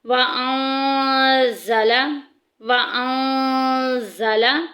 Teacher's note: اخفا کر کے پڑھیں گے، تھوڑی آواز ناک سے تھوڑی منہ سے